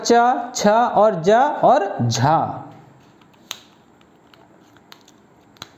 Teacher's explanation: ये 4 वर्ण आपके स्पर्श संघर्षी व्यंजन हैं